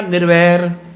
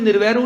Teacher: ਉਦਾਹਰਨ ਦੇ ਤੌਰ ਤੇ ਮੈਂ ਕਹਿੰਦਾ ਨਿਰਵੈਰ, ਰਾਰੇ ਨੂੰ ਔਂਕੜ ਲੱਗੀ ਹੈ, ਮੈਨੂੰ ਨਿਰਵੈਰੂ ਨਹੀਂ ਕਹਿੰਦਾ, ਨਿਰਵੈਰ ਕਹਿੰਦਾ, ਰਾਰੇ ਦੀ ਔਂਕੜ ਨਹੀਂ ਬੁਲਾਉਂਦਾ ਮੈਂ